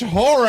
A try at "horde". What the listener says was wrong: You might want to pronounce a D somewhere over there.